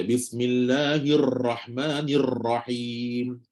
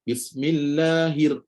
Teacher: baca getar terlalu banyak getar tu betul memang kena ada tapi terlalu banyak menggetarkannya itu adalah merupakan satu kesalahan sepatutnya getar sikit je Bismillahir mula-mula tu Bismillahirrahmanirrahim mula-mula tu A hujung tak payah dah